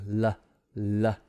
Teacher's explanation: it's not really blocking the airflow there's no friction it's just air gliding around the tongue · L is touching, and then the air is kind of floating around the side of the tongue.